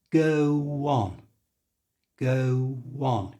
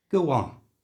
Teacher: And to say this in a natural way, we put a little W sound between the go and the on.